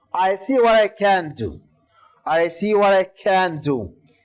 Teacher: The intonation goes falling because it's a statement again.